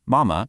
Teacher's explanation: in the word for mom, mama, that first tone is high and flat. So the neutral ma is sort of a mid-pitch. It's just quick, light, and you'll notice it never has a tone mark written above it. · it's this super light, unstressed syllable, and its pitch completely depends on the tone that comes right before it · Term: neutral tone